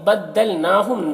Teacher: نون میں کھڑا زبر ہے جو الف مدہ کی طرح ہے تو اسے ایک الف کے برابر کھینچیں گے۔ ہم کے میم میں اظہار شفوی ہو رہا ہے، اسے جلد پڑھنا ہے۔